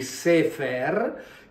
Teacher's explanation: queste qui sono due E, di cui una è lunga e una è corta